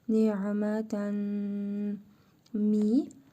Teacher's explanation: Tənvindəki nun hərfini burnumuzda tələffüz edərək bir əlif miqdarı uzadırıq. Mim hərfini isə şəddəli tələffüz edirik. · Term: idğamı meal qunna